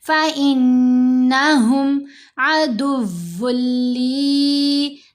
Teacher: دال کو واو سے ملائیں گے اسٹرانگلی کیونکہ واو مشدد ہے، پھر واو کو لام سے ملائیں گے. یہاں پر یرملون کا ادغام ہے لیکن غنہ نہیں کرنا.